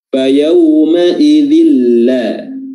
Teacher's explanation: Idgham memasukkan tanwin ke huruf lam bila gunnah dengan tidak ada gunnah atau dengung di situ. Menyertainya tidak ada dengung. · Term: idgham bila gunnah